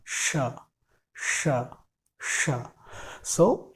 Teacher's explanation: आपको अपने जीभ को थोड़ा सा ऊपर की तरफ लेके जाना है, जो हमारा ऊपर के दांत है उनके पीछे लेके जाना है, और वहाँ से फिर इसके बाद टच करके फिर इसके बाद एयर फ्लो होगा।